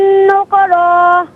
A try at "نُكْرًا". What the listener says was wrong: اچھا نکرا نہیں، نکرا، کیونکہ کاف بالکل ساکن ہوگا، صحیح ہے۔ السلام علیکم۔